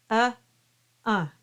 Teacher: through the nose and then you get the nasalized effect so make sure you've got the uh sound and then nasalize it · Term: nasalized vowel